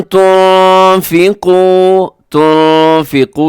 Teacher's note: नून साकिन के बाद फ़ा है, तो यहाँ भी आपने इख्फा करना है।